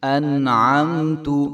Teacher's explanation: ہلانا بھی نہیں ہے اور عین کی آواز مکمل آنی چاہیے۔ انعمت، اور تا کو لمبا بھی نہیں کریں گے۔